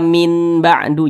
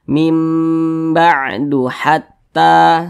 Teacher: Maka nun sukun berjumpa dengan huruf ba, hukumnya adalah iqlab. Cara membacanya, huruf non dirubah menjadi huruf mim.